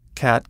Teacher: we study two tense vowels, a and ah, and the completely neutral schwa · The a sound has a tendency to sound a little nasal all on its own, and when other vowels are nasalized as well, it puts your whole voice in the wrong place.